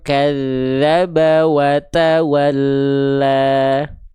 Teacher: Perhatikan t-nya ada percikan-percikan nafas.